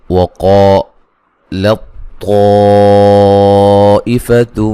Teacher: یہاں بھی جو ہے وہ طا کو لام کے بعد لام کو طا سے ملا کے پڑھیں گے، ٹھیک ہے، موٹی طا کی آواز آئے گی، تا کی آواز نہیں آئے گی۔ ٹھیک ہے، طا پہ جو مد ہے یہ مد واجب ہے، تا کا طا میں ادغام ہو رہا ہے، تو یہ جو ہے تا جو ہے مدغم جو ہے جس کا ادغام ہو رہا ہے اس کو سائلنٹ کر کے پڑھیں گے، ملا اس کی آواز نہیں آئے گی، ٹھیک ہے جی۔